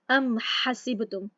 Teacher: ام حسبتم، ام میم کا اظہار ہو گیا، میم ساکن کا اظہار ہو گیا، آگے ہا ہم بالکل کلیئر پڑھ رہے ہیں۔